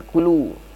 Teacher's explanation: itu ada mad tabi'i yang panjangnya 2 harakat